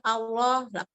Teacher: pada Allah termasuk tafkhim karena dibaca setelah patah